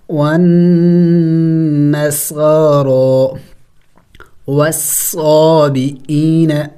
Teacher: City والے حروف note کریں، سٹی والے حروف کل 3 ہیں. صاد سین زا، یعنی ان کو پڑھتے وقت منہ سے سیٹی کی آواز نکلنی چاہیے